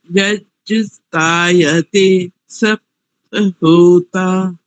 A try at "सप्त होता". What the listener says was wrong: हाँ सप्त, और इसको थोड़ा बड़ा कीजिए, सप्त होता, सप्त होता,